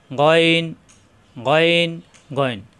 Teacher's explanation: গইন কণ্ঠনালীর শেষ অংশ থেকে উচ্চারণ